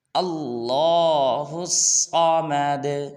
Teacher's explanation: اللہ میں لام کو پر ادا کرنا، یعنی کہ موٹا ادا کرنا۔ بعض لوگ پڑھ دیتے ہیں اللہ اللہ، تو اس لیے اللہ میں لام کو پر ادا کریں گے۔